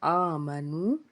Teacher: اس کے بعد آگے ہے آمنو، الف کے اوپر کھڑا زبر، اس کو کھینچنا ہے ایک الف کے برابر، اور واو سے پیچھے پیش ہونے کی وجہ سے بھی اس کو ایک الف کے برابر کھینچنا ہے